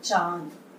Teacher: शिरोरेखा के ऊपर चंद्र बिंदु, शिरोरेखा के ऊपर चंद्र बिंदु जो है वो इसका सिंबल होता है। और इसका उच्चारण जो है बेटा नाक और मुख दोनों के द्वारा होता है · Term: अनुनासिक